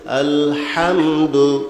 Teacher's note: হাটা হইল সিবাতে হামসার হরফ, বাতাস চালু থাকবে, হরফটা দুর্বল হবে।